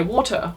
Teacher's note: if someone had quite a proper british accent they might say water which you know the t in the middle is being pronounced as well